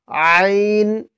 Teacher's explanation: আইনের মধ্যে তিন আলিফ টান দিতে হবে